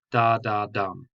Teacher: there are two unstressed syllables and one stressed syllable and it repeats that so it goes da da dum now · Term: anapestic